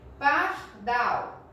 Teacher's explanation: Dal é a sílaba tônica porque é a mais forte. E o par é a sílaba átona porque é a sílaba que não tem força, ok?